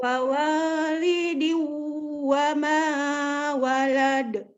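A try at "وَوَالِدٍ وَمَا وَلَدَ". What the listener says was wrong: Iya, bagus, Masya Allah.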